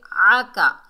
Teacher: मा वद्दअका, वाव को दाल से मिलाएंगे, मजबूती और जमाव से पढ़ेंगे क्योंकि दाल के ऊपर तशदीद है। आइन को हलक के दरमियान से अदा करेंगे